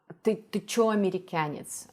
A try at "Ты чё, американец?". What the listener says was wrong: Well, his k and ts are not good. K should be sharper because it's a hard consonant here.